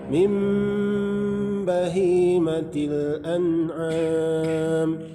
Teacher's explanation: Di situ ada tanda mim kecil, itu namanya iqlab. Jadi nunnya dibaca mim.